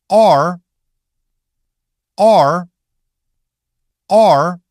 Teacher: Start open, and then let the sound curl into /r/. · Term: One smooth /ɑr/